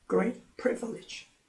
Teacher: 그런데 great와 privilege 이렇게 수식 관계가 될 때는 형용사도 내용어고 명사도 내용어지만 명사에 더 큰 강세가 있다고 했고 더 큰 강세가 있지만 음절이 privilege 3음절이 되니까 제1 그 단어 강세가 있는 곳에 강세가 와서 great도 강하지만 단음절 그다음에 pre 하는 부분이 강하게 읽어지고 나머지는 약합니다. 그래서 great privilege 이렇게 읽어줍니다.